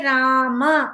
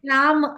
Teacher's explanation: అసూయతి పండితాయ అసూయతి పూర్తిగా చదవాలి ఇప్పుడు మనం రామ అని రాసాం అనుకోండి మనం సంస్కృతంలో అయితే రామ అని పూర్తిగా మా లో ఉన్న అకారాన్ని పలుకుతున్నాం హిందీలో అయితే రామ్ అంటారు మనం అందుకని అక్షరం అలాగే కనిపించినా కూడా మనం పూర్తిగా అచ్చుని పలకాలి సంస్కృతంలో